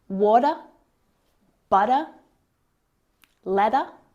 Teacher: we usually use the flap T between vowels and that means that the T sound sounds more like a d